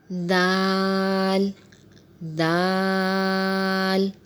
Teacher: دال کا مخرج یہ ہے کہ زبان کی نوک سامنے والے اوپر کے دانتوں کی جڑ سے لگے تو دال ادا ہوتا ہے، اور آپ دیکھ رہے ہیں کہ دال کو کھول کے لکھا ہے تو اس پہ بھی بڑی مد ڈلی ہوئی ہے تو اسے بھی کھینچ کے پڑھیں گے، دال۔